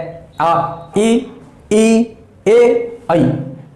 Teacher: मुंह गोलाकार आकार धारण नहीं कर पाता। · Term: अवृत्ताकार स्वर